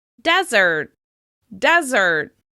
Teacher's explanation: These two similar looking words have different stress. The sandy location is stressed on the first syllable